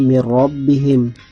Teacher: Kemudian idgham bila gunnah mir rabbihim. Tidak mendengung, ada nun sukun bertemu huruf ra.